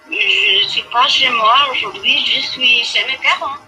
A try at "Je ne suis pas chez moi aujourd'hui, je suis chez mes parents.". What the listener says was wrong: Okay, that sounds like being at your parents is a pretty horrible thing. Say it again and sound happy.